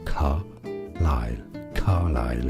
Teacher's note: In British English it's said as Carlyle. Stress on the first syllable, Carlyle. Carlyle.